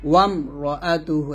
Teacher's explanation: মিম সাকিনের পর র, গুণনা করা যাবে না। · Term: মিম সাকিনের ইজার